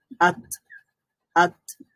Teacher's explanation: আওয়াজটা একেবারে বন্ধ হয়ে যাবে সাকিন হলে এবং একটা বাতাস জারি থাকবে